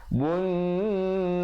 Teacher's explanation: dan ro-nya menjadi tebal kalau sahabat-sahabat pilih untuk waqaf. Kalau sahabat-sahabat pilih untuk wasal, ro je jadi nipis sebab dia baris bawah.